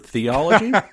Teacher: That first character is a theta that is pronounced with a th sound, and most definitely not a hard T.